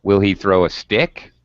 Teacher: You could answer yes or no. And these questions have final rising intonation as opposed to information questions where our voice pitch falls,